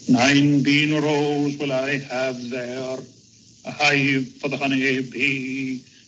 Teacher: One of the distinctive characteristics of his speech is the rhoticity with which he rolls his R's